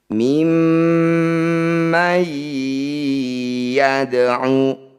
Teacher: bunyi mim kita dengungkan dua harakat dengan cara merapatkan bibir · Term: mim bertasdid